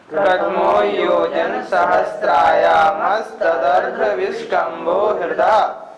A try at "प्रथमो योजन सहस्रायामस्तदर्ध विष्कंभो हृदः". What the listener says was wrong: उच्चारण फिर एक बार देखें। प्रथमो योजन सहस्राया, सहस्त्राया नहीं, सहस्रायामस्तदर्ध विष्कंभो हृदः।